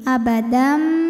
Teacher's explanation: Maka bunyi tanwinnya dimasukkan ke mim. Abadam bunyi m dan tahan bunyi m-nya, dengungkan. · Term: idgham bi gunnah